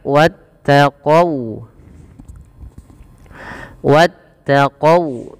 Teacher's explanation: Kemudian sempurnakan ketika kita melafalkan huruf wau. Jangan dibaca wattaqo qo dengan o tapi dia dengan u ya